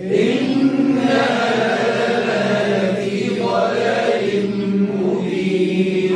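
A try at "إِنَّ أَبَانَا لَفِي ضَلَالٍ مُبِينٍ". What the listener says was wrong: معلش، إنا أبانا، تو النون غادي كان ممدودة عندكم؟ هي النون مش ممدودة. إنا أبانا لفي ضلال مبين.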